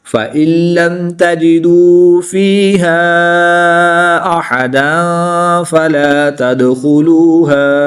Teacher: दो ज़बर की तनवीन के बाद हरूफ इख्फा में से फ़ा है तो यहाँ पर इख्फा होगा यानी गुन्ना ज़मानी करके पढ़ेंगे।